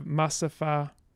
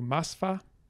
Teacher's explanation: Then we get schwa deletion.